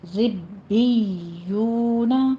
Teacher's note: رب، پھر با کے نیچے کسرہ ہے، آگے یا کے ساتھ اس کو اٹیچ کرنا ہے. ربیون، واو مدہ ہے، دونوں ہونٹوں کو گول کر لیجئے